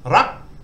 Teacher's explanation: And this mahanagat is short. So low class initial consonant, dead syllable, short vowel, and it gives a high tone. So ra, you've got to go high.